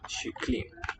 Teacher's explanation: the K before certain vowel sounds softens to a sh sound instead of k